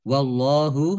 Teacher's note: Allahnya dibaca tebal karena harokat di depannya fathah. Lam fathah berdiri mad tabi'i panjang 2 harokat.